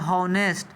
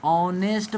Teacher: एच होता है यहां पे साइलेंट। यानी एच का उच्चारण नहीं होता है। ओ का उच्चारण होता है।